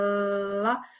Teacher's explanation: E a lateral, quando você fala lá, você percebe que não existe um obstáculo assim que prende o ar, mas existe uma passagem do ar ali que você percebe, né, pelas laterais ali por baixo da língua. Mas então esse L e esse lá, eles são conhecidos como consoantes líquidas laterais. É assim que a terminologia específica se refere, tendo em vista essa passagem do do ar na produção da da consoante, né?